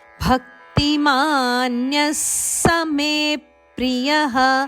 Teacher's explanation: ನ್ಯದ ನಂತರ ಬರುವ ವಿಸರ್ಗದ ಉಚ್ಚಾರಣೆ ಸ